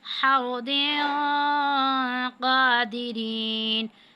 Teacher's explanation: نیچے تنوین ہے اور قوف آ رہا ہے، تو یہ حروف اخفا میں سے ہے، یہاں پہ ہم اخفا کی صورت میں غنہ کریں گے